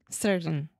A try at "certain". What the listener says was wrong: Almost. You're saying, sir, everything in your mouth is in place to make the T, and you don't, and you just say in.